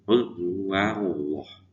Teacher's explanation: Huruf wa itu dibaca wa, tidak wo.